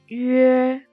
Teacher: When we pronouncing Yue, pronounce U first, then slide to A. The airflow need to be continued.